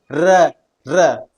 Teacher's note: इस कारण इसे र को कंपनज या लुटित व्यंजन कहते हैं। क्योंकि हमारी जो जीवा है वो लुढ़कती हुई प्रतीत होती है और उसके अंदर एक कंपन उत्पन्न होता है · जब भी हम र का उच्चारण करते हैं तो हमारे मुंह के अंदर एक कंपन उत्पन्न होता है , इस कारण इसे र को कंपनजात या लुंठित व्यंजन कहते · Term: कंपनजात व्यंजन